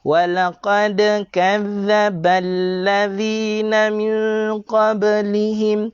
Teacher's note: Qalqalah pada huruf dal, qalqalah pada huruf ba, qalqalah sughra, lantunan kecil.